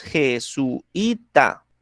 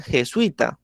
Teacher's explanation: Pero hay partes donde lo pronuncian de una manera diferente, lo pronuncian jesuita, ¿sí? Entonces no separan el sui, ¿sí? Formando como tal el diptongo